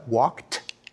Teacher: Very few of us realize, for example, in English, that the past tense suffix ed is actually pronounced in 3 different ways. When we say he walked, we pronounce the ed like a t, walked.